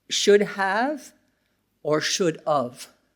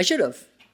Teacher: labiodental fricative at the end of of and have is the same.